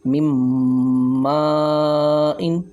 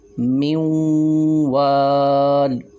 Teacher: اسی طرح اب واو کی مثال میں آپ کو دیتا ہوں، من وال، اب یہ چار حروف یا، نون، میم، واو، یہ ہم نے غنہ کے ساتھ ادغام کیا ہے